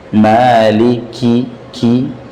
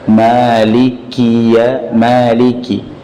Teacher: Otomatis dalam huruf kaf sudah terkandung hamz, jerianun nafas. Ada angin yang keluar, meskipun anginnya kita tahan karena dia masuk dalam kategori syiddah.